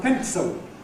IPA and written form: ˈpentso (pencil)